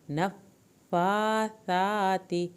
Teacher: فا کی کھڑی زبر، سا کی کھڑی زبر کو پورا پڑھیں، تا کی زیر کو ہرگز لمبا نہیں کرنا